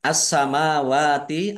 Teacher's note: alif lam syamsiyah. Karena tidak dibaca langsung masuk ke huruf berikutnya yaitu sin. Ditandai sinnya ada tasdidnya.